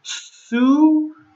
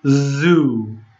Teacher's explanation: they're the same except s sound is not voiced okay z sound starts here in your voice box but your